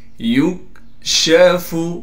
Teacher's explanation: یکشف اسی طریقے سے یا کو کاف سے ملائیں گے اس لیے کہ کاف ساکن ہے اور کاف کو باریک کر کے بغیر قلقلہ کے پڑھیں گے